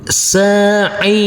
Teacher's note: huruf ain yang berkasroh ini karena bertemu dengan huruf ya sukun, maka kita baca panjang dengan panjang 2 harokat